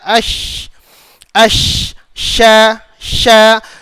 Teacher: Huruf shin di bahagian tempat keluarnya di bahagian tengah lidah, okey, di daun lidah lah, okey, tengah lidah diangkat ditemukan ke lelangit atas. Bila kita sebut huruf shin ni, huruf shin kita jangan pakai hujung lidah.